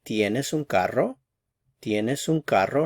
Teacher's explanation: So for the question, one thing to keep in mind is that when we're asking questions in Spanish, yes or no questions, the intonation rises a little bit towards the end · Notice there's a little bit more intensity with the verb carro when I ask the question. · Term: rising intonation